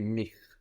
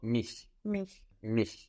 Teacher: And again, no friction on the CH. We shouldn't hear mich.